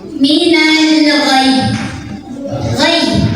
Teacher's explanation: Karena ada alif lam yang ketemu sama huruf qamariyah yaitu ghain, maka lam ini terbaca secara jelas atau diidharkan ya. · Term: alif lam qamariyah